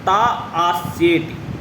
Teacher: ता यहाँ पे दीर्घ है और अस्य यहाँ पे जो है आपको ह्रस्व, ता में आ जो है दीर्घ है और अस्य में अ जो है आपका ह्रस्व है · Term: वत्सानुसारिणी